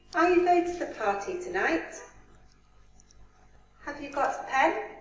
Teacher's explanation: this is yes no question so we have a rising intonation in the end